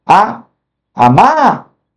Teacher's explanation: Sílaba tônica é a última. Então é uma oxíona.